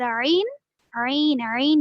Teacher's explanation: سین حروف اخفا میں سے, اسی لیے ہم یہاں پر عین میں نون کی آواز کو ناک میں چھپا کر پڑھے, نون کو ظاہر نہیں کرے